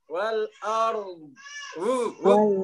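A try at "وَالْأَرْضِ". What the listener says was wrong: Terakhirnya itu harus dapat. Wal ardh. Dotnya kurang mengalir, Ustaz.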